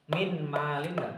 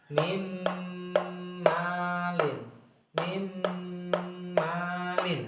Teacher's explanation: Kita harus memasukkan suaranya nun ini menjadi huruf mim.